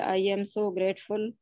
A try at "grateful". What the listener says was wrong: Not better, but try to concentrate on your R pronunciation. It sounds like a grateful. Listen, grateful.